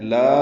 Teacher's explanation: لا الف مدہ ہے، 2 حرکات لمبا ہے